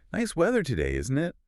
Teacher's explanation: And that falling tone is relaxed. It communicates that we are on the same page.